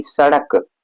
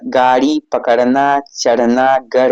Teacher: उच्चारण करते समय जीभ झटके से ऊपर जाती है। इन्हें उषिप ऊपर फेंका व्यंजन कहते हैं। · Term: उक्षिप्त